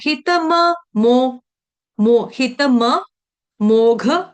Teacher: हित के बाद डबल म है दो म पूरे पूरे का उच्चारण करना है